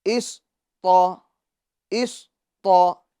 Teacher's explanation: صاد بھی پور ہوگا اور تو بھی پور ہوگا کیونکہ یہ دونوں حروف مستعلیہ میں سے ہے، ٹھیک ہے۔ یاد رہے یہ صاد کے اندر قلقلہ نہیں ہوگا، اس کے اندر آواز کو ہم لوٹائیں گے نہیں، یعنی اس طرح اس یہ غلط ہے، بلکہ تو ٹھیک ہے۔